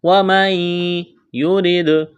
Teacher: را کو باریک کرنا ہے، دال پر قلقلہ کریں گے